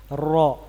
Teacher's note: Berikutnya ada takrir khusus ro. Adalah irti'adu ra'si, bergetar ujung lidah.